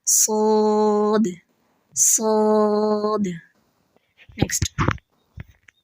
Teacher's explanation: سو زبان کا یعنی آواز کا پورا پریشر زبان کے کپ شیپ ہونے کی وجہ سے تالو کی طرف ہوتا ہے